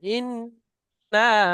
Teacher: ইন্না মধ্যে মুনফাসিল, তিন আলিফ পরিমাণ টান দেন